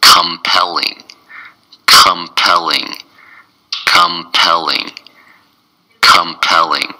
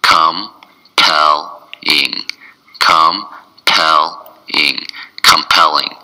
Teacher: It's three syllables and the stress is on the second syllable.